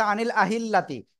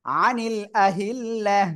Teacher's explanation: করলে কি এরকম হবে না ওয়াকফ করলে হা সাকিন হয়ে যাবে গোলটা হা হয়ে যাবে এবং সাকিন হবে